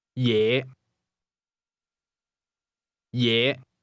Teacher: Is pronounced with a low rising tone